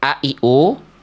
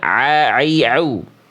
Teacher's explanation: Kalau Hamzah dia cukup kayak kita bilang a, I, U. Tapi kalau huruf ain dia lebih tekan kuat.